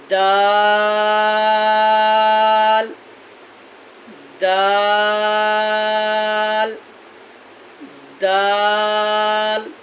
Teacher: ज़ुबान की नोक और सनाया उलिया की जड़ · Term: मखरज